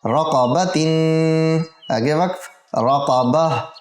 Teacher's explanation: गोलता को वक़फ़ की सूरत में हा साकिना से बदलेंगे